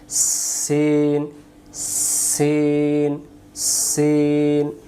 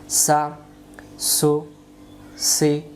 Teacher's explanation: সিন অক্ষর সামনের নিচের দাঁতের আগা থেকে শিশি দিয়ে পড়তে হয়। সিন এমন শব্দ হবে, সিন, সিন, সিন, উচ্চারণ সিন জবর সা, সিন পেশ সু, সিন জের সি।